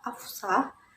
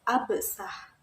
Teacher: bunyi f&s adalah dua bunyi yang memiliki kemiripan bunyi f&s sama-sama merupakan bunyi geser kedua bunyi yang sama-sama berupa bunyi geser kemudian diubah Salah satunya